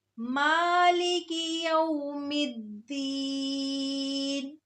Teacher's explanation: آیت نمبر 4، مالک یوم الدین، مالک یوم الدین، مالک یوم الدین۔ ما اس میں میم پہ جو کھڑی زبر ہے اس کی وجہ سے اس کو تھوڑا سا لمبا کریں گے